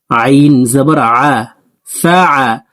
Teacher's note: আইন হরফকে হলকের মধ্যখান থেকে উচ্চারণ করব।